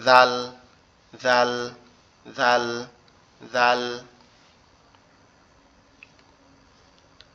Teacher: আমরা যদি হালকা করে আমাদের জিহ্বাটা সামনের উপরে দুই দাঁতের আগার সঙ্গে এখনই লাগাই, তাহলে কি হবে, জাল উচ্চারণ হয়ে যাবে